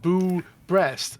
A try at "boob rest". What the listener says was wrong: It's not a boob breast like a scary breast. It's a boob rest, a thing that you rest your boobs upon.